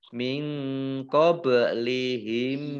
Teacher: nun sukun bertemu dengan huruf qaf dibaca samar-samar, bacaan ikhfa · ba sukun bacaan qalqalah dibaca memantul